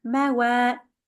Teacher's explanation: Wa is followed by alif to make it a bit longer.